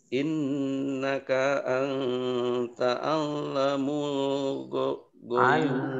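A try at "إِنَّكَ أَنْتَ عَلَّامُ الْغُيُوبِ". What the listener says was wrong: Lalanya panjang. Innaka anta allamul ghuyub.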